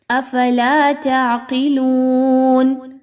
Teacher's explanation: قاف کے نیچے زیر ہے، قاف موٹا حرف ہے، اس کو پر پڑھیں گے